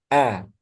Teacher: Huruf hamzah dia keluar dari aqsal halqi. · Huruf hamzah dia keluar dari aksol halki. Masih ingat ya, aksol halki. Pangkal, tenggorokan. Kemudian sifatnya jahar.